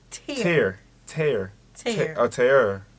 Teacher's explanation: It's the R. I think the R is rolling.